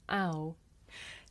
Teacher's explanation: this is a diphthong a double vowel sound the shape the mouth makes changes from the beginning of the sound to the end